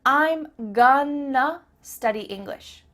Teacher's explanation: I'm gonna study English means I'm going to study English. That word to simply becomes a. I'm gonna study English.